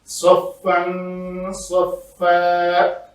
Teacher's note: تنوین کے بعد صاد حروف اخفا میں سے ہے تو ہم نے اس کا یہاں پہ اخفا کیا۔ آگے دو زبر والی تنوین کے اوپر ہم نے رکنا تھا تو اس کو الف مدہ بنا کر رکھا، اس کو دکن وجا غلط ہوگا۔